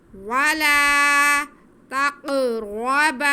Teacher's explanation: کو ہم کھینچیں گے ولا تقربا تا پہ زبر قاف ساکن قاف حروف قلقلہ میں سے ہے اور ساکن ہے تو ہم اس کو جنبش دے کے پڑھیں گے آواز کو ہلا کے پڑھیں گے